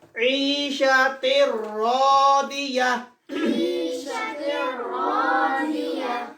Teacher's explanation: Without nasal passage, without gunna. Without gunna. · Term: Idgham without gunna